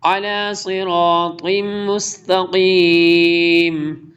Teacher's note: دیکھیں صاد موٹے رو میں سے، اور یہاں پہ را بھی موٹا اور طا بھی موٹا پڑھا جائے گا